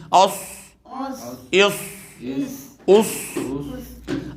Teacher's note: صاد پر سیٹی کے ساتھ پڑھا جائے گا نا، یعنی چاروں دانتوں کو ساتھ ملا کے پر سیٹی اس طرح کر کے، یعنی اس، اس، اس۔